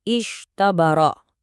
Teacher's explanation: Kita punya huruf shad yang tebal ketemu sama tho yang tipis.